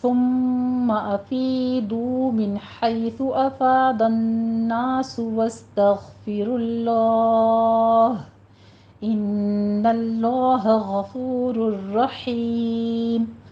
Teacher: میم مشدد ہے، یہاں پہ غنہ واجبہ کریں گے یعنی اکمل غنہ ہوگا۔ · من حیثو میں نون ساکن کا قاعدہ اظہاری حلقی ہے، حیثو میں ہا وسط حلق سے ادا کریں گے، سانس کی آواز کے ساتھ آگے یا لین ادا کرنا ہے۔